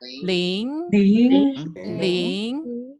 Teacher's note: Ling is second tone. It's second tone. So the sound has to go up.